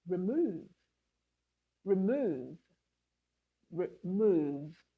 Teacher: You can see we're stressing move. That's the stressed syllable in the word remove. We said it louder, longer, and with a higher pitch.